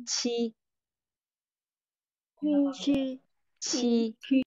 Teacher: Không, không uốn lưỡi nhá. Không uốn lưỡi, không cong lưỡi nhá. Là chữ chờ. Chờ nhẹ.